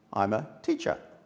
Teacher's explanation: so the er is converted to a schwa